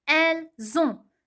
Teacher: You see, I did a liaison between S and O. I connected the S to the O in the pronunciation.